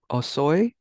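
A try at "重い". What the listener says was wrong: Close. It does have o, but it's actually mo. Omoi. Omoi.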